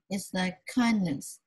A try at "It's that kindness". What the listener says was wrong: Slow down. It's that kindness. You're not pronouncing your final sounds properly. So it's very muddled sounding right now. You need to slow down and practice with your N's, your T's, and S's. It's that.